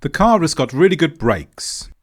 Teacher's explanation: this time there was a fall in tone at the end of the statement